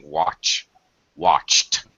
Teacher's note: voiceless sounds the e d is pronounced as a t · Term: The T sound